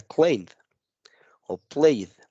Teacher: de la pronunciación es como si omitiéramos la e Ajá entonces pareciera como si omitiera el sonido de la e y junto la n y la d